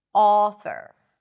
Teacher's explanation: in some dialects, especially on the east coast in the US, you will notice that this sound is a bit more rounded.